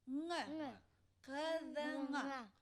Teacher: Такая же артикуляция, как у К. Но только воздух проходит через нос.